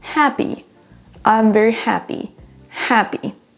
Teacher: On ne va pas prononcer happy avec la même intonation sur les 2 syllabes. On prononcera la première plus longtemps et plus fort.